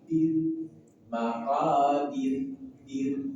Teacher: di akhir ayat ada ra juga sebelumnya kasrah, maka wajib dibaca tipis tarqiq.